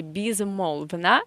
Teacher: the first o is in stressed position with stress, so we say o, and the last o is in unstressed position without stress, so we say безмолвно, and the first ye is again not stressed, so we say безмолвно.